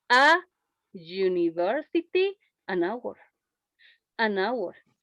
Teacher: University is a consonant sound and it's not vowel sound. And hour, it's a vowel sound. The H disappears.